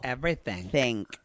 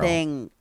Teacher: that unaspirated K at the very end of things